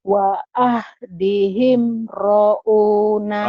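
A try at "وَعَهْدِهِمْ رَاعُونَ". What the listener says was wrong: Ra'nya panjang. Ra'una. Ayo lagi.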